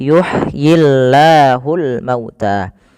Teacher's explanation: lafal Allah bila didahului dengan huruf kasrah maka tidak boleh ditebalkan. Nah di sini kita namakan dengan lamut tarqi lam yang tipis.